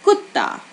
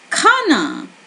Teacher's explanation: for k, you need to cut back the aspirated sound. For kh, you need to increase that a little bit.